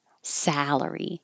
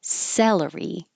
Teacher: the vowel as in hat, where you have to have your tongue very low, your jaw very open, and your lips back.